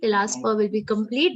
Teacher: the last pa will be complete, but it should not be long. Okay, not parantapa.